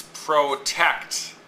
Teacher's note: The tect is the stressed part of the syllable. The pro is the unstressed part of the syllable.